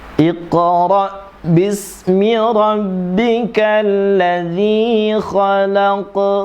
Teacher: Kalau di khalaqnya ini menggunakan qalqalah sughra.